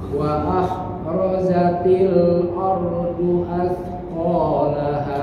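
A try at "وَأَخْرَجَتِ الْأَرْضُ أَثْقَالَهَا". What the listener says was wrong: Nah, kho-nya jangan diputus tapi dialirkan juga itu. Wa kho ya. Wa akhrajatil. Nah, tilnya ini berjalan.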